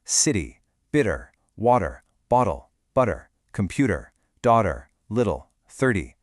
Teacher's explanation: Notice how my voice just gently bounces over those middle consonants. It is actually physically unnatural and uncomfortable for an American to say computer with a hard T in casual conversation. · I really want you to hear exactly how the T converts to a D in real time.